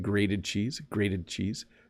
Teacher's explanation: it does soften to a D sound